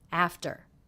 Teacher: the second syllable very low in pitch flat and quick